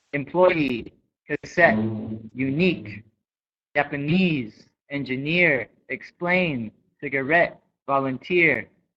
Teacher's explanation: So the first portion of the word is reduced and the ending is stressed.